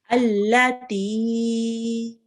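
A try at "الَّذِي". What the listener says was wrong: Make sure to prolong it for a bit longer, because we have to make it longer than 2 counts or 2 seconds.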